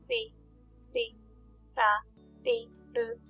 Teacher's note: Be careful with the Japanese R sound. It's not quite like the R sound we have in English. It's actually somewhere between an English R sound, L sound, and D sound.